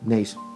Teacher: observen que la fuerza de voz está en la última sílaba de tenéis entonces una palabra aguda